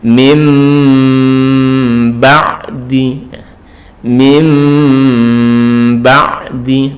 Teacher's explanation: Jadi itbaq asyafatain itu istilahnya dibaca dengan menempelkan di antara dua bibir. Jadi nunnya ini berubah menjadi mim, itu bibirnya menempel, dua bibir menempel.